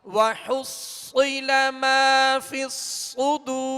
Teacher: इस सौद को पुर पढ़ना है और सीटी की आवाज़ इसमें पैदा होगी। वहुस्सिल मा फिस्सुदूर, और इन दोनों सौद पे तशदीद है और तशदीद तीन दंदानों वाली शक्ल को कहते हैं।